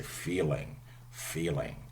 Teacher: Americans only use dark L. They would say feeling.